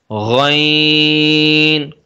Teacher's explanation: غین اور خا کا مخرج ایک ہی حلق کے اوپر والے حصے سے، اس کو بھی پر پڑھیں گے۔